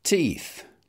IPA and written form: tiːθ (teeth)